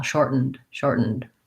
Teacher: I do think releasing that D is helpful, shortened, because otherwise it's hard to tell if I'm saying shorten with just an N or shortened, shortened. I have to make sure there's a little bit of D there so that we can hear that verb tense. So many times the pronunciation at the end of the word is critical for the grammar and for comprehension of knowing which word we're using.